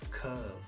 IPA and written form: kɜːv (Curve)